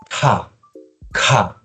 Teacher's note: jadi kayak ada hembusan nafas keluar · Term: konsonan meletup